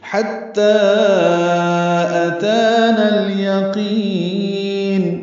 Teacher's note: ہا وسط حلق سے ادا کریں گے، تا سے ملائیں گے